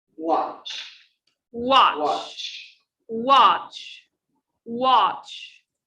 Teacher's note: want to add a sound of that and and okay so watch is ended by cha cha there is no vibration so it's a voiceless sound · a voiced sound now say the verb watch watch watch watch focus on the last sound there is no vibration and that's because is a voiceless sound when we want to